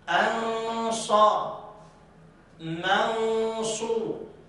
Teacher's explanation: يبقى إذن هنا النون أخفيت في الصاد